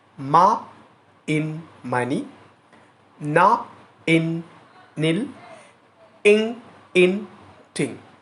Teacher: ఎందుకు వీటిని నేషనల్స్ అని పిలుస్తామంటే మనము వీటిని ముక్కు సహాయంతో పలకటం అనేది జరుగుతుంది. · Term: nasal sounds